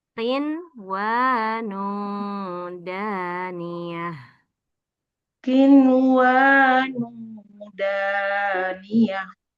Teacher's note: Berarti dibaca ikhfa, samar-samar dengung.